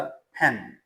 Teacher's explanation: तो पा के साथ एच की आवाज़ मिला के वो निकालते हैं।